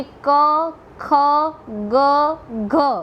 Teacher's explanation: હવે ગુજરાતીની અંદર જે કંઠ્ય વ્યંજનો છે એટલે કે જે વ્યંજનના ઉચ્ચારણ વખતે જીભનો પાછળનો ભાગ ઊંચો થઈને જે કંઠના આગળના ભાગને એટલે કે કોમળ જે તાળું છે તેને અડે અથવા તો તેને સ્પર્શે તેને કંઠ્ય વ્યંજન કહેવામાં આવે છે.